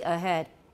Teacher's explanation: 有一点 voicing. So the rule is that H between vowels may be partially voiced